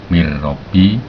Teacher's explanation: tidak mendengung tapi menggunakan masukan nun dan ro tadi dileburkan tanpa mendengung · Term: idgham bilahunah